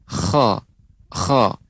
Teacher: Kha itu ada seperti garukan. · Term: huruf kha